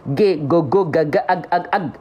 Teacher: huruf g itu enggak mengalir suara kalau G nama sifatnya syiddah